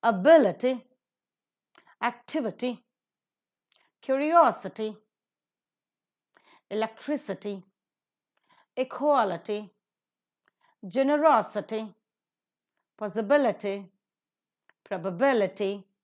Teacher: All these are the polysyllabic words ending with ITY, and they take up the stress in the antepenultimate syllable.